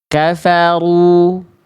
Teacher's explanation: Rnya aktif naik pangkal lidah tebal begini.